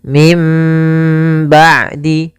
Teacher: kami memilih untuk membaca dengan idbak yaitu bibir kita tertutup dengan rapat sedangkan furja masih ada sedikit e rongga mulut apa bibir kita